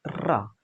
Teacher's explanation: जीभ के अगले सिरे को मसूड़े के भाग में लगा कर के बोलते हैं तो इसमें तेजी से कंपन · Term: लुंठित ध्वनि